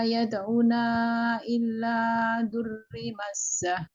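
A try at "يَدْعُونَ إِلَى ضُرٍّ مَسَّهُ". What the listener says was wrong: Yang ila itu jangan tasdid Bu ya. Yad'una ila. Kemudian yang kedua durrim, nah itu tanwin, ketemu mim, itu adalah idgham ya.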